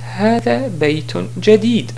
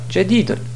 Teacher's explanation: Si on s'arrête sur la phrase, on dit hada baytun jadid et non pas jadidun.